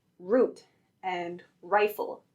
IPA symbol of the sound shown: ɹ